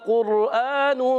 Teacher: قاف کا مخرج زبان کی جڑ، تالو کا نرم حصہ